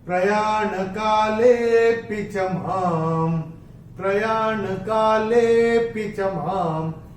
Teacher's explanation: ले को थोड़ा सा खींच के बोलेंगे जिससे उसमें से अ निकल के आए